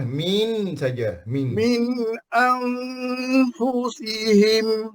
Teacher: tapi min tu tak dengung lah